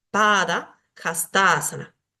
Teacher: una palabra compuesta por tres términos distintos, pada, hasta y asana, va a tener dos acentos dentro de la misma palabra · en hastasana tengo el acento ya en la sílaba fusionada pero en pada tengo que sí o sí como es una palabra de dos sílabas en la última no puedo acentuar tengo que acentuar en la primera